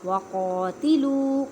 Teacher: قاف کو ادا کرتے وقت خیال رکھیں کہ کاف کی آواز نہ آئے کیونکہ یہ حروف مستعلیہ یعنی موٹے حروف میں سے ہے. واؤ ساکن سے پہلے پیش.